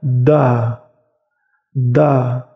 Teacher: Jadi agak tebal sedikit karena ujung lidah kalian itu bertemu dengan pangkal gigi seri atas. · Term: huruf dal